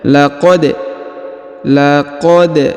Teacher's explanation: bacaan kita ya Wil Amin baik kita lanjut ayat berikutnya perhatikan huruf da berharakat sukun ya maka kita pantulkan atau kita qalqalahkan